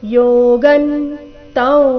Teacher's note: ಅನುಸ್ವಾರದ ಉಚ್ಚಾರಣೆ ನಾಸಿಕವ ರೀತಿ ಕಾರಣ ಮುಂದಿನ ಶಬ್ದ ವಿದ್ಧಿ ಅವರ್ಗೀಯ ವ್ಯಂಜನ ವ ದೊಂದಿಗೆ ಪ್ರಾರಂಭ ಆಗ್ತಾ ಇದೆ